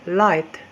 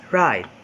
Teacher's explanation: L is voiced alveolar lateral liquid consonant, while r is voiced alveolar rhotic liquid consonant.